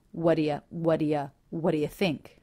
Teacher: so the word think is stressed none of the sounds reduce here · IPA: [wʌ‿də‿ jə θɪŋk ə‿ðɪs‿wʌn]